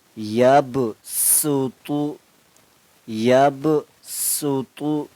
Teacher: دیکھو سین، صاد بھی اور سین بھی حروف صفیریہ میں سے ہیں، یہ سیٹی والے حروف ہیں، لیکن صاد کو پور موٹا کر کے پڑھنا ہوتا ہے، سین کو باریک کر کے پڑھنا ہوتا ہے